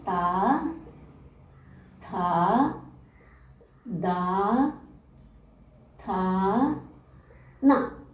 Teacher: പല്ലിന്റെ സഹായത്തോടുകൂടി ഉച്ചരിക്കുന്നത് ഏതൊക്കെയാണെന്ന് നോക്കാം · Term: ദന്ത്യാഹ